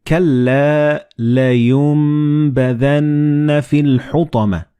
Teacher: the noon and ba, they will be assimilated together and you will pronounce them as meme